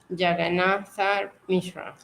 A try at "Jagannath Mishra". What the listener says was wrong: Okay, you can make the A silent. Jagannath Mishra. Jagannath.